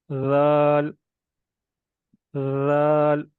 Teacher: सा और जाल, ये दोनों पढ़ते हुए सीटी की आवाज़ नहीं आनी चाहिए।